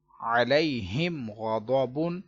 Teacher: غنہ نہیں کیا کیونکہ میم ساکن کے بعد با اور میم نہیں ہے بلکہ غین آ رہا ہے، تو اس لیے اظہار شفوی ہوا اور ہم غنہ نہیں کیا ادھر۔